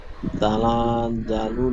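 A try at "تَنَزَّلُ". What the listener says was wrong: তানা টান হবে না, তানাজ। তানাজ্জালুল। তানাজ্জালুল জিম উচ্চারণ হয়ে যাচ্ছে, যা আছে, যা। তানাজ্জা।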